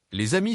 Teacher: Par exemple, les amis se prononcent les d'amis avec un son Z entre les deux mots liés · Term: liaison